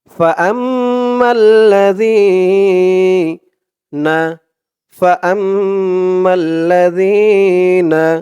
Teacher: আর জালের আওয়াজটা একদম নরম পাতলা হবে, জিব্বার মাথা ওপরের দাঁতের মাথার সাথে লাগবে জালের উচ্চারণটা করার সময়।